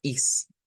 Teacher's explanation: popularmente a eso a veces le quitan la t y solo suena a is